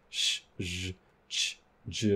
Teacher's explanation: these really turbulent sounds are a group that are plus strident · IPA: s, z, ʃ, ʒ, t͡ʃ, d͡ʒ